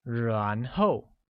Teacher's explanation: said with the mid rising tone on a and a falling tone on Oh